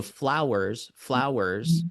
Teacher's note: So flowers, flowers, strong weak, strong weak.